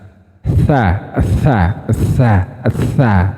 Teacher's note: Tha itu bunyinya makhrajnya sama kayak zal. Ujung lidah dengan ujung gigi seri atas. Tha. Nah, seperti itu.